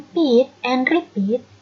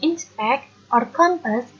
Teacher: The P in pit and repeat is an aspirated P, but the P in inspect or compass is an unaspirated P.